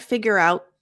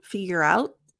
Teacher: It's not figure out. My tongue goes into the T position, figure out, but there's no air.